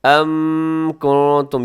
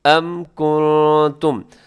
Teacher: اس آیت مبارکہ کے اندر پہلا لفظ ہے ام کنتم، یہاں میم ساکن ہے اور میم ساکن کے بعد کاف ہے، تو یہاں پر آپ نے میم ساکن کو ظاہر کر کے اظہار شفوی یہاں پہ کرنا ہے۔